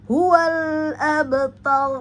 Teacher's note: ada ba sukun di tengah-tengah ya jadi maka ada qalqalah qalqalah pada ba maka qalqalah sugra hual abtar.